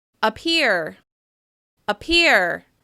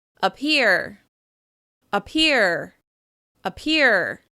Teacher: the first syllable has a reduced vowel sound. It sounds like /ə/.